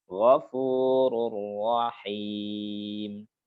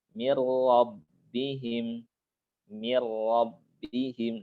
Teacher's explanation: Kita baca langsung masuk aja ke huruf ra-nya. Sehingga ra-nya seperti ra bertasdid gitu. Sehingga ada sifat takrirnya.